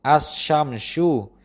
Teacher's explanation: huruf sukun lam tidak terdengar. Yang terdengar adalah huruf setelahnya, yang telah diberi tanda saddah. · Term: idgham